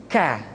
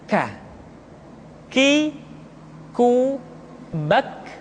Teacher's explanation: Diucapkan dengan mengangkat pangkal lidah kita ke posisi di depan huruf Qaf. K. Diucapkan dengan mengalirkan nafas kita. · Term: huruf K